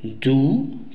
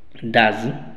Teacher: esa o de du cambia de sonido de un sonido u que tiene largo a un sonido corto que es a